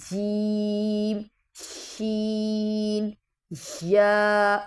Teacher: چھٹا مخرج ہے وسط زبان اور وسط تالو، یعنی زبان کا سینٹر اور تالو کا سینٹر بالکل ایک دوسرے کے قائم مقام ہیں، مقابل ہیں، تو یہاں سے ہم نے جیم، شین، یا یہ ادا ہوں گے، ٹھیک ہے۔